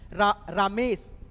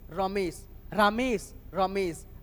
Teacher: और ये वाला जो है ना गलत साउंड आ रहा है रामेश नहीं होता है रमेश होता है तो अ का ध्वनि जो है ना इसमें था न कि आ की मात्रा बैठाना था